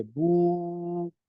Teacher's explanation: इसी तरह बू की सूरत देखिए, बा पे पेश है और वाव आगे जो है वो साकिन है, तो वाव साकिन से पहले अगर पेश आएगी तो वो वाव मद्दा बन जाएगा, उसे दराज करेंगे